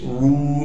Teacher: کو واو مدہ سے ملا دیں گے، را واو پیش رو، واو مدہ ہونے کی وجہ سے را کو ایک الف کے مقدار کھینچیں گے اور را پر پیش ہونے کی وجہ سے را کو موٹا بھی کر کے پڑھیں گے